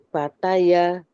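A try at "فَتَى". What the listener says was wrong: Jelaskan lagi fa-nya. Fa.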